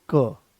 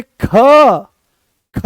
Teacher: जैसे ही हमने क बोला, कोई ज्यादा जोर नहीं लगाना पड़ा, आराम से वो आ गया है क, कम प्राणवायु की आवश्यकता पड़ी, आराम से आपने उसको बोल दिया। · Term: अल्प प्राण